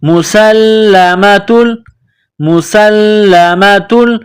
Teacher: پیدا کرنی ہے، سین کو لام کے ساتھ پلس کرنا ہے، لام میں سختی کرنی ہے، لام کے اوپر تشدید ہے